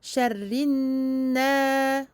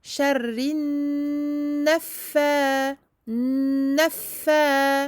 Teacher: Vous entendez la durée que je donne au noun. Attention à ne pas prolonger le e de na. On ne dit pas sharrin na.